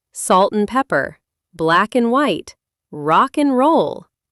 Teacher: In 90% of casual conversations, and loses its A and its D. It just becomes an N sound.